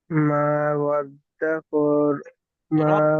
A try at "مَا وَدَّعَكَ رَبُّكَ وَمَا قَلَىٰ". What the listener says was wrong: ربك وما قلى। ওয়াদ্দাআকা, ওয়াদ্দাআকা আইন আছে, ঠিক আছে, মিট করে নেন।